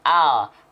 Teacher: kalau huruf L yang disentuhkan itu ujung lidahnya saja.